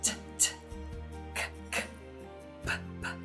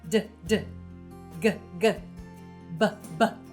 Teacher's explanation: Those are all the voiceless part of the pairs, and here are the voiced ones.